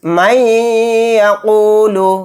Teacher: گیا تو یہاں پر بھی ادغام مع غنہ کا قاعدہ ہوگا، یا پر تھوڑی دیر آواز کو روک کر غنہ کریں گے